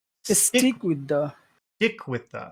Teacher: So stick becomes very big with the becomes very small.